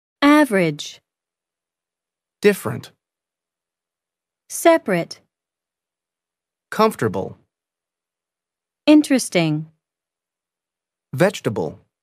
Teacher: the vowel immediately after a stressed syllable is sometimes not pronounced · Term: unpronounced vowels